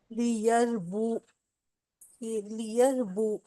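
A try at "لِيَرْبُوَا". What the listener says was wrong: نہیں بو کو لمبا کیوں کر رہے ہیں؟ لیربوا،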